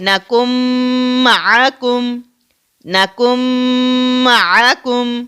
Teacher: تو یہاں پر میم کے اوپر تشدید ہے تو زیادہ زور میم پر دیا جائے گا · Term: ادغام